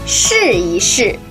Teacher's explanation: E should be read in a neutral tone